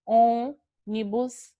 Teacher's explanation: ele não fica aberto a pronúncia dele é fechada